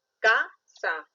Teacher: la mayor fuerza de voz no está en sa, está en ka